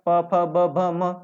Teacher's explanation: ओष्ठ व्यंजन कहेंगे 5 को